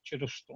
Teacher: это не звучание конечно этой фонемы, это такая краткая „шва“ на самом деле